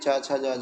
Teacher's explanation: चा छा जा झा का उच्चारण स्थान तालु से होता है, यानी तालव्य से होता है।